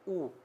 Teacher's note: ऊ कहाँ से बोला जा रहा है, ऊ होठ से बोला जा रहा है। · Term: ओष्ठ